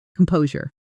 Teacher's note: Stress on the second syllable, and that sure ending sounds soft, like jure.